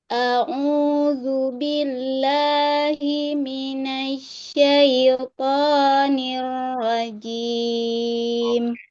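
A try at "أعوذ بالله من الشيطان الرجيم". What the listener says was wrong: Nanti dilatih lagi huruf shin ditekan, kemudian huruf ro digetarkan. Minasyaitonir rajim.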